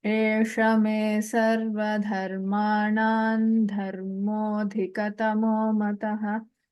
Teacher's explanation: Nakara comes. So the Anuswara takes the form of a Nakara here.